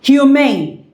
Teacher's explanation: its own stress is on main, the second syllable